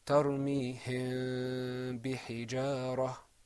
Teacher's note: Let's apply the rule of ikhfa. You're going to see that the mim hides a little bit, which is what ikhfa means.